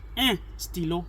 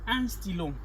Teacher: it's a nasal sound, because it passes through the nasal passage when you pronounce it in French. It is not un, it is un.